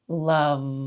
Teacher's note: When you want to feel a buzzy vibration on that lower lip where it's making contact with the upper front teeth.